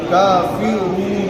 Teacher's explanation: کاف کو کیا نہیں پڑھنا ہے، مجہول نہیں پڑھنا ہے، کا سیدھا پڑھنا ہے